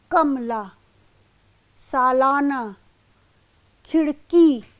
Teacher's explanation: हिंदी में स्वराघात का स्थान अस्थायी होता है, अर्थात अनेक अक्षर वाले शब्दों में आदि, मध्य तथा अंत में किसी स्थान पर आघात हो सकता है। जैसे कमला पे क, सालाना पे ला तथा खिड़की में की पर स्वराघात हो रहा है। कमला, सालाना, खिड़की, यहाँ पर स्पष्ट है क, ला और की, यहाँ पर स्वराघात हो रहा है।